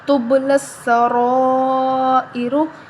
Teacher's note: لسا رو ای، را پیش رو، تب لسا رو ای رو۔ تو با پہ جزم ہے، حروف قلقلہ میں سے ہے با، تو ہم اس پر قلقلہ کریں گے